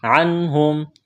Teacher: نون ساکن کے بعد حروف حلقی میں سے ہا ہے، نون ساکن پر غنہ نہیں کریں گے، آواز ناک میں نہیں چھپائیں گے. میم ساکن کے بعد حمزہ ہے، اظہار کریں گے.